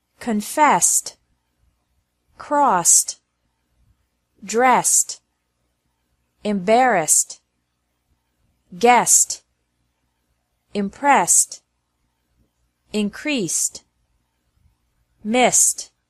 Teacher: e d is also pronounced like T after verbs ending with an S sound